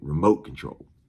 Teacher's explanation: In the South, you got to put emphasis on the second syllable of remote.